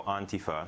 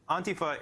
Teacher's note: the emphasis is on the first syllable, and it's pronounced more on than and